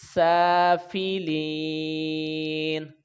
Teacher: اور نون کے اوپر زبر ہے، وقف کریں گے، جب وقف کریں گے تو نون کے اوپر زبر نہیں پڑیں گے، نون ساکن ہو جائے گا · اسفل، اور سین کے اوپر کھڑی زبر ہے تو اس کو کھینچ کے پڑھیں گے 1 الف کے برابر، فا کے نیچے زیر ہے، اس کو جلدی ادا کریں گے، آگے یائے ساکن نہیں ہے جس طرح یہ اس کے ساتھ ہے، یہ دیکھیں لام کے نیچے زیر ہے، آگے یائے ساکن ہے تو اس کو کھینچ کے پڑھیں گے، یہ یائے مدہ ہے